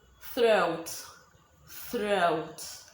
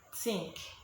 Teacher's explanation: the first one is the voiceless th which is you take out your tongue and you blow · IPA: /θ/